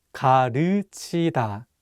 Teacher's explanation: this vowel 으 is much wider than the vowel 우. Listen one more time slowly.